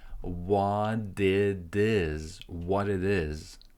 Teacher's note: we link what and it with is. And it sounds like a quick D in both cases.